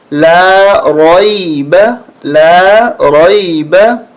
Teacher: را کو موٹا کریں گے اور اس کو زیادہ نہیں کھینچیں گے، نہ زیادہ جھٹکا دیں گے، بلکہ نرمی کے ساتھ